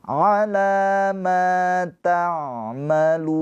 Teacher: Maka ini mad arid lis sukun, lu-nya dibaca panjang, boleh 2, boleh 4, boleh 6 harokat. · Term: mad arid li sukun